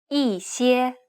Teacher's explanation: Since the next tone is a high tone, the first character is pronounced with a falling tone. If the next tone would have been a falling tone, then this character would have been pronounced as a rising tone.